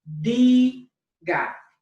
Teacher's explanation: It ends in a vowel, and so that tells me it falls under rule number 1, and the natural stress would fall on the next to last syllable. So the syllable that is D-I is going to have the natural emphasis.